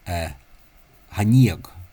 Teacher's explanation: I notice that the CH there has become a H because that was originally, you find that in Ulster a lot of the time CH, including Meath, CH, when not at the start of a word, has become a H, or a very loose ch, velar fricative